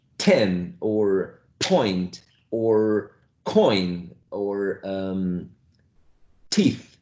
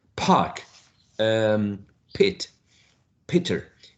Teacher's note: you feel the puff of air in your own hand alright and that is called aspiration aspiration okay only present in this voiceless consonant sound which are